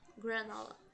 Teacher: A gente tem aquele jeitinho R caipira de falar.